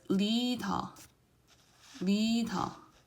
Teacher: if its liam is the first consonant sound, then the tongue, what it does is it touches the roof of your mouth right above your upper teeth. So it doesn't touch the teeth, just right above it.